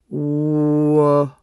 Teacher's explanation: W, as in will, is a voiced bilabial approximant.